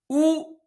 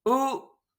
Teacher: It is the same that this U, but with the spread lips. U, rounded lips. U, spread lips.